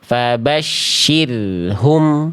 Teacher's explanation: Jangan sampai bunyi roh sukun itu diputus bunyinya. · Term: ro sukun